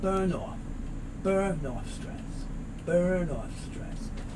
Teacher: So let's say burn. Remember, the end moves over to the O, so it's burn off.